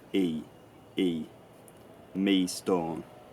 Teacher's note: the vowel in me had started to break or fracture, it started to diphthongize.